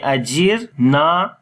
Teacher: ajirna, ra we read in light sound, because there is sukun sign on the ra and the kasra is before the ra